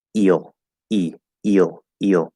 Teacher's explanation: You can hear the E in the front, but then it kind of gets pulled back into the O. And it kind of makes the E almost start to sound a little different.